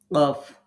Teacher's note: এই যে আপনার জিহ্বার গোড়া, উপরে যে তালু আছে যেটাকে আমরা ইংরেজিতে আপার প্লেট বলি, আমাদের মুখের উপরের যে অংশটা, শক্ত যে অংশটা, আপার প্লেট, এটার সাথে লাগবে। তো উপরের জিহ্বার গোড়া, উপরের এই তালু এর সাথে মিলিয়ে উচ্চারিত হবে কফ। উচ্চারণ করার সময় একটু ড্রপ দিবে, ধাক্কা খাবে